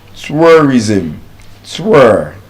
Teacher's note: It's a diphthong. U and the schwa sound.